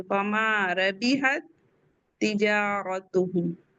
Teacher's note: تو ساکن والے تا کا متحرک والے تا میں ادغام ہو جائے گا، یہ اس میں مرج ہو جائے گی، اس کے اندر چلی جائے گی.